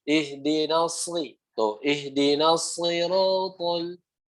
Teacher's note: Kemudian di sini disambut dengan huruf shad yang kasroh lagi. Ya, huruf shad ingat makhrajnya sama kayak huruf sin, cuma bedanya naikin pangkal lidah biar tebal